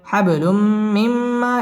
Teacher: তানভীনের বামে মিম আসছে মিম ইদগামে বা গুন্নার হরফ গুন্না সহ মিলিয়ে পড়তে হবে